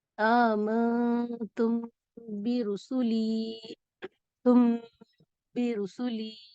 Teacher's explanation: اور اخفاء شفوی کی کچھ مثالیں اس طرح ہیں: آمنتم برسولی، تم برسولی. غنہ خفیف ہوگا، یعنی کم غنہ ہوگا